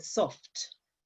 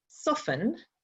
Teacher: you can hear that the T or the t sound on the end of soft but then if you say soften, you don't actually articulate the T